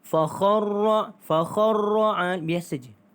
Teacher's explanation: Huruf ra yang ada tanda syaddah itu kita tidak baca dengan cara kita menggetarkan, ya. Dia biasa.